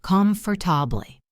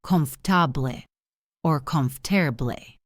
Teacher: It looks like it has 4 syllables, comfortable. But native speakers usually squeeze it into 3 or even 2